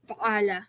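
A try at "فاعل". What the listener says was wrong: Not fa'ala, no. No, look, fa should be long. Fa'ala is the shape, yeah?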